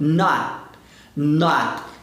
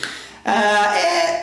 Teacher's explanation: Quando o T é a última letra da palavra, a gente vai segurar esse T no céu da boca, a gente não solta. Por exemplo, se eu quero falar isso aqui, ó, eu não posso falar not, não é not, eu não solto, eu travo, é o T preso, ó, not.